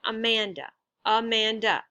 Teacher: That's 3 different syllables. And the second syllable is stressed.